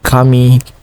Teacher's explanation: in the first syllable, it has a high pitch, and in the second syllable has a low pitch